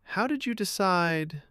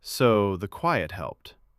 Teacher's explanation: I use a light rise to invite. How did you decide? And a soft fall to confirm. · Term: intonation awareness